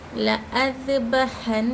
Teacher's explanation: لا یہ الف نہیں پڑھ رہے ہم یہ پڑھ رہے یہ ملا کے پڑھ رہے یہ حمزہ کو پڑھ رہے ہم. لا اذبحنہ نون پر تشدید ہے اور نون پر تشدید ہے یہاں پر غنہ کرنا چاہیے